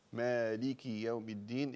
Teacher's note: مالك يوم الدين، اكسري الكاف كسرا كاملا